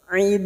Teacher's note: Dan ujungnya kita pantulkan karena terdapat huruf dal yang mati di akhir kalimat dan dibaca waqaf qalqalah kubra. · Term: qalqala Kubro